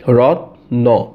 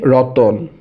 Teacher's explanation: যেমন রত্ন, রত্ন, কিন্তু আমরা বলি হচ্ছে রতন। তাহলে রত্ন থেকে রতন, এটা হচ্ছে মাঝখানে একটা স্বরধ্বনির আগমন, রতন অ। যেমন রত্ন, কোনো মাঝখানে অ ছিল না, কিন্তু আমরা এখানে বলতেছি কি রতন, অ বলতেছি, র ত অ ন। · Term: মধ্য স্বরাগম